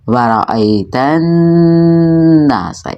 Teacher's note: وہ حروف شمسی ہوتے ہیں جن کے شروع میں الف لام لکھا تو ہو لیکن پڑھنے میں نہ آئے، تو اس کی ادائیگی کچھ ایسے ہوگی، وَرَأَيْتَ النَّاسَ، نون مشدد ہے اور نون حروف غنہ میں سے ہے، یہاں پہ ہم نے غنہ کیا ہے، ہماری آواز ناک میں 2 سے 3 سیکنڈ تک گونجی ہے